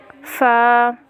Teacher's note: مخرج نمبر 14 دوبارہ سمجھ لیں، یعنی ثنائے علیا کے کنارے جب نیچے والے ہونٹ کے اندرونی حصے سے لگیں تو ایک حرف ادا ہوتا ہے